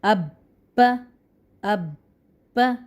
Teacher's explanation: اس کو مشدد کر کے، زور لگا کے، دبا کر ادا کریں گے کیونکہ مشدد ہے